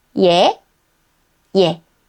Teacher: In everyday Korean ㅒ(yae) and ㅖ(ye) may also sound very similar almost the same